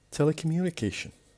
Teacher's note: In this word we have 1, 2, 3, 4, 5, 6, 7 syllables, and because we have ION, the stress is on the sixth syllable, the one before the last